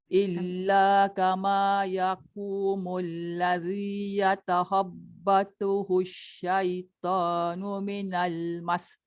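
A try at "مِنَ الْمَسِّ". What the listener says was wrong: Jangan cepat sangat berhenti sebab dia sabdu. Minal mas. Ya, dia jangan panjang, dia tekan dekat sin tu kuat.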